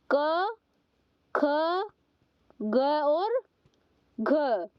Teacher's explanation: जो इनका उच्चारण है वो हमारा गले से होता है। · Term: कंठ वर्ण